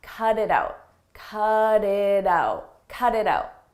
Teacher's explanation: cut it out you'll notice we have T's in between vowels in American English when a t comes between vowels we change that to a a very soft d